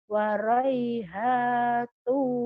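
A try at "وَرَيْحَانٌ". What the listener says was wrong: No, kan jadi waraihanun non bukan tu. Waraihanu.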